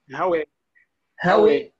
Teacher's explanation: وهي تتردد بين ألف والياء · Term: الإمالة الكبرى